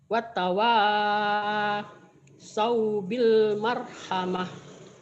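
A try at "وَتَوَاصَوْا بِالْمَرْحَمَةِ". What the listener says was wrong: Watawa jangan wattawa kalau wattawa artinya lain watawasau bil marhamah.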